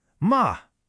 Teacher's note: the fourth tone. This one is sharp, decisive. It starts high and just drops. Think of a quick sharp command.